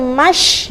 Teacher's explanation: Kemudian wamash, nah, saya tekankan kembali, shin adalah huruf yang rokhawah, artinya harus ada banyak hembusan.